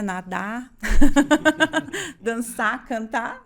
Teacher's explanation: pela nossa maneira de abreviar, suprimir os R's no final, tipo, né, nadar, dançar, cantar, não é?